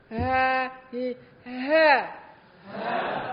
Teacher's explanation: Terasa getarannya masih terasa di pangkal tenggorokan.